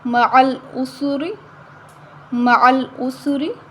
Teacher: را کے نیچے زیر آ رہی ہے تو ہم را کو باریک پڑھیں گے۔